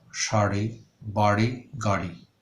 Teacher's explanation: তাড়নজাত ডশূন্য র, শাড়ি, বাড়ি, গাড়ি